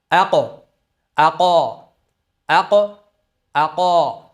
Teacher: endi unda fatha halqum tubidan ya'ni mahrajdan chiqishi kerak bo'ladi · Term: fathalik holati